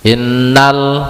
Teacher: ada Alif Lam qamariah lagi atau lamnya itu dibaca izhar